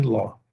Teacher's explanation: uma vogal aberta longa, né, média aberta longa, tá? Então aqui a gente tem Ló.